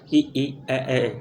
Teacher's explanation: जिन स्वरों के उच्चारण में जिह्वा का अग्रभाग सक्रिय रहता है उन्हें अग्र स्वर कहते हैं